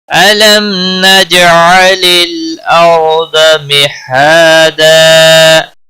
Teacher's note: نج علل لام ساکن کو ہلانا نہیں، اور را ساکن سے پہلے زبر ہے، اس لیے را کو موٹا پڑھیں گے · الم میم ساکن کے بعد نون آیا ہے، اس سے اظہار ہوگا، اس اظہار کو اظہار شفوی کہتے ہیں۔